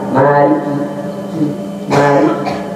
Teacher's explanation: Kemudian juga ketika kita mengucap Maliki Yaumiddin, maka ketika mengucap kaf itu harus memiliki sifat hamz, yaitu ada seperti apa yang keluar, yaitu dari kaf kita.